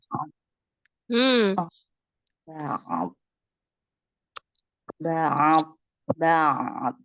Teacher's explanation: Kan kalau dari ba-nya terakhir dari bibir, ba. Kemudian ainnya dari al-halki, ya kan? Kemudian bodnya itu baru alisan.